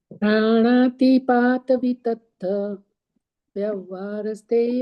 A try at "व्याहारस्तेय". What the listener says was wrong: गड़बड़ हो गई, व्यवहारस्थ नहीं है, वही व्यवहार नहीं लिखा, व्याहारस्ते।